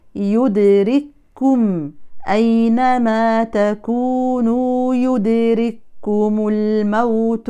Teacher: لو همسنا الكاف الأولى يبقى فكينا الإدغام، وهذا خطأ. القراءة جاءت بإدغام الكاف الأولى في الكاف الثانية، والقراءة بكاف واحدة مشددة · الكاف المضمومة لا نبالغ في الهمس لأنها متحركة